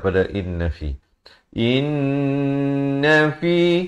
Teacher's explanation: wajibul gunnah, nun sabdu kena dengung dua harakat. Jangan baca inna fi, itu tak sempurna.